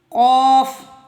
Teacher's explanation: تالو کا نرم حصہ مطلب زبان کی جڑ سے بالکل اوپر، سامنے زبان کی جڑ سے بالکل اوپر، یہ زبان کی جڑ ہے، اس سے اوپر، زبان کی جڑ سے اوپر ان دونوں حصوں کو ملائیں۔